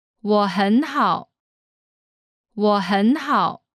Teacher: Here there are three third tones in a row. The first two change to the second tone.